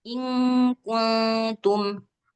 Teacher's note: Di suara nunnya itu samar-samar antara nun dengan kaf atau nun dengan ta, huruf selepasnya. Terus ada dengungnya. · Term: Ikhfa